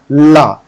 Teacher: पार्श्विक मतलब होता है ऐसा वर्ण जिसको बोलते समय आपके जीभ के बगल से जो है वायु निकले आप ला बोल कर देखिए ला तो आप देखिएगा इससे बगल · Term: पार्श्विक व्यंजन